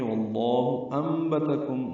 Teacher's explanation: ساکن کے بعد بان کی وجہ سے اقلاب ہو رہا ہے، نون کی جگہ میم پڑھیں گے